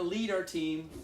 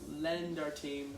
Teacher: a little stronger, long E sound. I heard lend, which is a short E sound